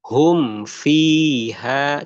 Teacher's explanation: Karena huruf fa itu bibirnya hanya bawah aja, ya. Huruf bibir memang huruf bibir tapi bukan dua bibir tapi bibir bawah aja.